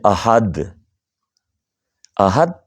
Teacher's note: جب ہم دال پڑھیں گے اور دال پر وقف کریں گے تو وقف کی صورت میں قلقلہ ہوگا